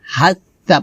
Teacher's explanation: সাটা জিহ্বার আগা উপদাঁতের আগায় লাগিয়ে পাতলা করে উচ্চারণ করতে হবে